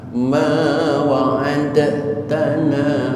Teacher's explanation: Nah ini dalnya dimasukkan ke huruf ta, sehingga Bapak lihat di Al-Quran timbul tasdid di atas ta. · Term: idgham mutajanisin